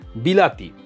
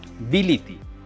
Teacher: বি আর তি যা আছে তাই কিন্তু লা টা হয়ে গেল লি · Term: মধ্যগত স্বর সংগতি